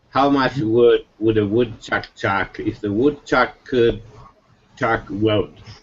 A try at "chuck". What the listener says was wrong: Now you were having some problem with your vowel. It's not chalk. It's chuck. So try it one more time and really focus on your when you get to the chuck.